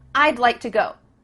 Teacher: we're cutting off all the sounds in the word would except for that final D